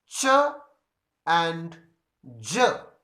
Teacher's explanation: the two organs in the mouth come in contact with each other but they are slowly separated and little friction is heard so you can say that there is neither complete stop nor · there is neither complete closure in the mouth nor complete friction is heard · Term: affricate sounds, affricates